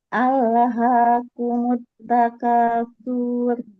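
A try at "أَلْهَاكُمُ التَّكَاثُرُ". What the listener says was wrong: Jangan su-nya yang dipanjangin. Ro-nya yang dipanjangin. Apa yang dipanjangin? Tawasud ro. Sifatnya. Nah, gimana caranya? Sur. R-nya yang dipanjangin satu harokat, bukan su-nya. Alhaakumut takatsur.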